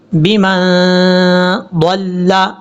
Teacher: میم کو جب نون سے ملائیں گے تو یہاں غنہ بھی کیا جائے گا، یہ نون ساکن کا اخفا کا غنہ ہوگا۔